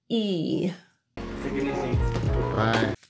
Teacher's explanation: pull the middle of your tongue up to the palette to create e